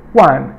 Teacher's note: then Juan is fourth tone tone and uh so again remember the fourth tone is a falling tone